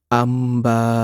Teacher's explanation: নুন সাকিন বা তানভিনকে মিমের সাথে মিলিয়ে গুন্নাহ সহকারে পড়তে হবে। যেমন আম্বা। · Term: কলব